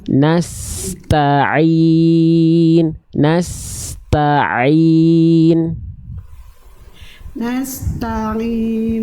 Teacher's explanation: Nasta'in. Nah, jadi pastikan taknya dulu dituntaskan, baru masuk ke ain. Jangan sampai ain dan taknya terkontaminasi satu sama lain ya.